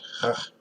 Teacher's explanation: The Hebrew letter Het has only one sound, which is the Ch sound. It's a hard H sound.